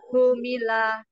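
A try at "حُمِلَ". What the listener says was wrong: Ha, humila. Tidak ditiup hu, tapi hu. Humila dari tengah tenggorokan.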